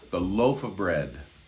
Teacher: the of almost sounds like uh